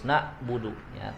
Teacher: Yang penting kita udah tahu bahwa huruf ain itu di situ harus dialirkan, suaranya tidak terputus